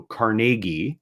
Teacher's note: that his the pronun correct pronunciation of his name was uh with the emphasis on the second syllable